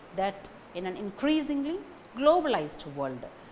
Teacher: So, the main stress falls on increasingly globalized world. Only these 3 parts convey the sense, main sense of the intended sentence.